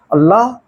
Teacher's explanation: जब इसका उच्चारण करते हैं तो वायु क्या है हमारे मुख से दोनों कार्नर से मतलब दोनों किनारों से जीभ के बगल बगल से होके निकलती है इसलिए इसको पार्श्विक कहा जाता है हा काकल कहा जाता है